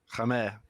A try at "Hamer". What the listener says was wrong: Don't pronounce the H. Amer, Amer.